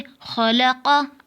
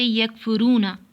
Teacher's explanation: क़ाफ की आवाज़ मोटी और झटके वाली होती है, जैसे खलक़ा। काफ की आवाज़ बारीक और बग़ैर झटके वाली होती है, जैसे यकफुरूना। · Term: हुरूफ़ कलकला